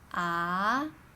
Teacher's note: Second tone is a question rising tone